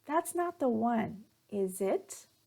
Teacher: intonation will go up at the end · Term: rising intonation